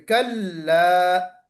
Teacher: کلا عین نہیں نکلنا چاہیے